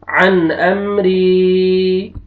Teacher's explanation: या सुकून से पहले कसरा, रा को आपने खींचना है। अन अमरी, मीम कसरा नून सुकून मिन, गैन फतहा या सुकून गई, मिन गई, रा कसरा री, मिन गैरी। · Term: मद्दा